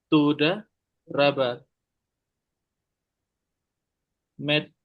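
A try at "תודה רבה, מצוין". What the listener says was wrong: Ini nun, Metsuyan. Pakai nun ini nun.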